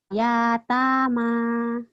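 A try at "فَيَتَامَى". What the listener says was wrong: Ya. Lagi?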